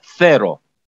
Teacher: Первая буква произносится межзубным звуком «с».